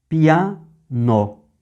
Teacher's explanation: Aí você junta o I de pi com o A. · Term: sinérese